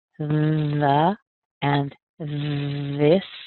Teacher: you'll make sure that your tongue is a little between your teeth and there's a vibration going on.